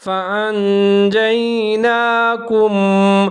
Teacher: یا ساکن ہے، جیم اور یا دونوں ملا کے پڑھیں گے، نون کے اوپر کھڑا زبر ہے، اس کو ایک الف کے برابر لمبا کر کے پڑھیں گے